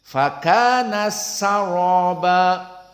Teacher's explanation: Maka di sini dipopulerkan oleh qiraah Hamzah dengan idgham al-kabir. Ta as-sakinah masuk kepada sin.